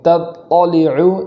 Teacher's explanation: پہلے تا پڑھیں گے جو پور نہیں ہے، پھر طا پڑھیں گے اسی مخرج سے اسی طریقے سے صرف پور کرتے ہوئے ، اور دونوں میں فرق واضح کریں گے، تطلع اس طریقے